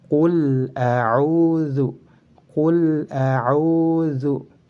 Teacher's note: lam sukun yang terdapat pada fi'il bertemu dengan hamzah harus dibaca jelas